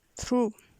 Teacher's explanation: Voiceless fortis dental fricative.